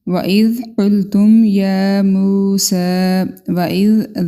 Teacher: دال کو نرمی سے ادا کریں گے، قاف کو پر پڑھیں گے، تم میم ساکن کے بعد یا ہے، میم کا اظہار ہوگا، یا موسیٰ، یا کے اوپر کھڑی زبر، میم کے ساتھ واو مدہ اور سین کے اوپر کھڑی زبر، تینوں کو ہم ایک ایک الف کے برابر لمبا کریں گے۔